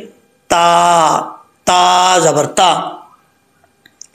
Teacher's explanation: इस ता का मखराज है ज़ुबान की नोक ऊपर वाले दांतों की जड़ों से लगे तो ता पढ़ा जाता है। इसके लिए ज़ुबान को ऊपर उठाने की ज़रूरत नहीं है, अगर ऊपर उठा के पढ़ेंगे तो गलत हो जाएगा, मोटा पढ़ा जाएगा, ऐसा नहीं करना। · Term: ता बारीक